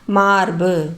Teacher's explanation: இந்த வார்த்தையில வர பு அப்படிங்கிற உகரம் வந்து குறுகிதான் ஒளிக்குது அதனால இது குற்றியல் உகரம்.